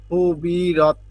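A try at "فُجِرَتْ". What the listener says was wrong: ফুজিরত, এটা জিম, হ্যাঁ। ফাঁকিয়ে জিম রে ধরছে, এইটা র।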